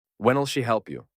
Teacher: стоїть на початку запитання і перебуває під наголосом вона допоможе тобі у спеціальному запитанні головними елементами є питальне слово та основне дієслово тому вони виділяються наголосом елементи які знаходяться між ударними словами ніби перескакуються іноді навіть випадають